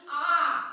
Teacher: जब हम ए बोलते हैं तो हमारा पूरा मुंह खुल जाता है